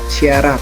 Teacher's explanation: artikulasi lamino palatal, daun lidah dan langit-langit atas, seperti bunyi S, SY pada kata syarat.